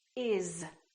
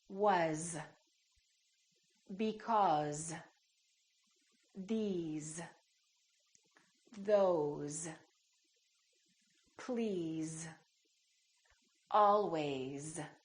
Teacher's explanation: some very common words that we use all the time that are spelled with an S and pronounced with the z sound